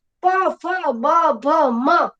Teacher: બે હોઠ જોડાય અને બોલી શકાય છે, એટલે આને ઓષ્ઠ્ય વ્યંજન કહેવાય.